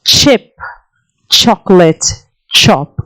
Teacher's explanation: Ch, the affricate ch occurs in the word initial, beginning of the word.